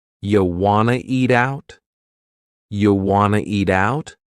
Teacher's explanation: we have reduced want to become wanna. This is a common reduction in English.